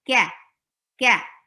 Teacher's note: open your jaws for fatha and make a kaf light. It's not qa, ka, ka.